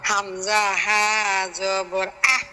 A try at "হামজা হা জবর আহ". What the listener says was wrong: এই তো হয়েছে মাশাআল্লাহ।